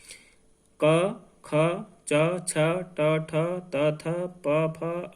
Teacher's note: अघोष स्वतंत्रियों में कंपन नहीं होता है, ये अघोष है, ठीक, यानी कोई कंपन नहीं है, कोई हलचल नहीं है।